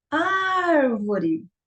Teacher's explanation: você percebeu que a sílaba mais forte é o ar. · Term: proparoxítona